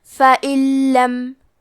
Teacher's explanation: یہاں بھی حکم ہے ادغام بغیر غنہ، تو ہم یہ حکم کو بغیر غنہ سے لیکن تشدید کے ساتھ یہ حکم کو ادا کریں گے۔ فَإِن لَم، کلمت فَإِنَّ میں حرف النون کو 2 حرف کے برابر پڑھنا ہے کیونکہ اس پہ تشدید ہے، اور کیونکہ تشدید زبر کا ہے تو لفظ الجلالہ کے لام کا حکم ہے تفخیم، تو ہم حرف اللام کو موٹی آواز میں پڑھیں گے۔